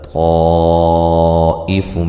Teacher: فَطَافَ عَلَيْهَا طَائِفٌ مِّن رَّبِّكَ وَهُمْ نائمون طا کو موٹا ادا کرنا ہے، الف مدہ ہے، علی لین ہے، ہا الف مدہ ہے، طائف یہ جو مد ہے مد واجب ہے، الف مدہ کے بعد حمزہ اسی کلمہ میں ہے